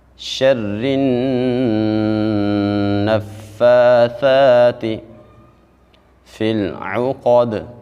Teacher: دال بھی حروف قلقلہ میں سے ہے، اس کے اوپر بھی ہم آواز کو ہلا کے پڑھیں